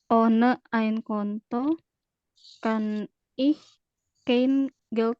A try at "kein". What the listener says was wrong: Ya, jangan sebut kain. Kain.